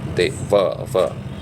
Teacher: व तो दांत और ओठ के बीच में संपर्क होना चाहिए